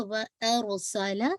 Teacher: وَأَرْسَلَ, را کو آپ دیکھیں ہیوی کریں گے, را سے پہلے جو لیٹر ہے حمزہ اس پہ فتح ہے, اور را جو ہے جسے کہا جائے جزم والی ہے تو را کو ہیوی پڑھا جائے گا